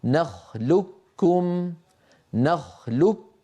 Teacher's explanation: العرب استساغوا ان ينطقوها كف مشدده فيقولون الم نخلوكم الم نخلكم فيدغمون القاف في الكاف فيكون النطق بكاف مشدده · فينطق كافا مشددا لا يبقى للقاف في النطق اثر · أغلب الرواة، حتى القبائل، كان يدغم القاف في الكاف فيقول: نخلقكم فينطق كافا مشددة لا يبقى للقاف في النطق أثر